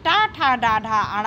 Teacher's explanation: ट वर्ग जिसमें ट ठ ड ढ अड़ आता है इसका उच्चारण स्थान मूर्धा या मूर्धन्य है